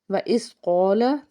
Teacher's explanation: قاف جو ہے حرف مستعلیہ کا حرف، اس کو پر پڑھنا ہے، الف سے پیچھے زبر، ایک الف کے برابر کھینچ کے ادا کرنا ہے۔